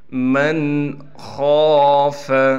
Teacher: خا کو موٹا کر کے پڑھنے کے ساتھ خا کو ایک الف کی مقدار کھینچیں گے